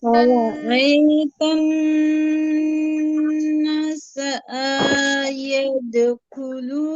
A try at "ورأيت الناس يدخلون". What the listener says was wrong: না টান হবে এক আলিফ। আবার বলছি খেয়াল করেন ورأيت الناس يدخلون আপু না টান হচ্ছিল না, আবারও খেয়াল করবেন ورأيت الناس তান গুন্নাও হবে, না টানও হবে।